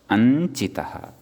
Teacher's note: अनुस्वारः यः वर्तते तस्य परसवर्णत्वेन नासिकास्थानसाम्यात् ञकारः एव भवति